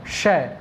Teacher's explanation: इसके बाद में श, ये जो मूर्धन्य श है, इसको षटकोण वाला श बोलते हैं, इसको बोलना है मूर्धन्य श। इसका उच्चारण करते समय आपकी जीभ बिल्कुल ताल मूर्धा के ऊपर जानी चाहिए।